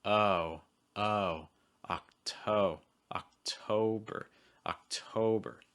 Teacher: Make sure again you're holding that O sound long enough. Don't rush to get to the B.